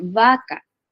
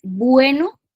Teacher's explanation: al decir vaca, es como que suena un poco más abierto, con los labios más abiertos, y al decir bueno, los labios se cierran un poco más y hace que la letra suene un poco fuerte.